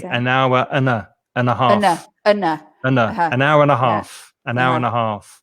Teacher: So we say duh, an hour and a half, an hour and a half. In fact, I might even not pronounce the d sound of the and. I might just say an hour and a half.